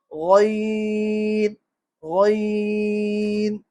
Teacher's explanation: موٹا لفظ ہے اس لیے زبان کی جڑ بھی اوپر اٹھ جائے گی۔ · غین تھوڑا نیچے یعنی حلق کی طرف سے ادا ہوتا ہے،